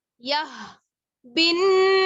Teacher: چھوٹی ہا جو ہے اس کا مخرج ہے حلق کا سب سے نیچے والا حصہ, یا کلیئر ہونی چاہیے, ادروائز ورڈ جو ہے وہ پورا نہیں ہوگا.